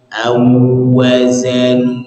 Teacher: aw dari fathah yang rahangnya terbuka, kemudian masuk ke huruf waw sukun atau di sini waw tasdid itu, maka harus dimonyongkan juga. Monyongnya harus sempurna.